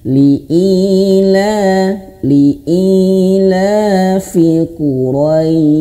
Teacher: Jadi dilembutkan rois dan dipanjangkan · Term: madlin